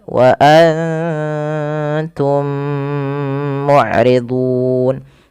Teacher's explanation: mim mati bertemu dengan mim Itu ada bacaan Idgham Mimi dan caranya adalah kita menahan bunyi mim